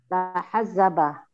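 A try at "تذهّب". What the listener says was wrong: Kebalik hurufnya. Tadahaba.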